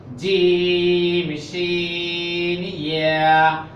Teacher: জিভার মধ্যখান তার উপর উপর তালুর সঙ্গে লাগাইয়া তিনটা হরফ জিম শিন ইয়া